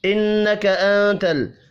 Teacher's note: نون مشدد پر غنہ کریں گے، نون ساکن کے بعد تا ہے، اخفاء حقیقی ہوگا